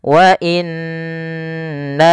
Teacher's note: setelah pertama menahan nunnya, kemudian na-nya dipanjangkan lagi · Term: mad jaiz munfasil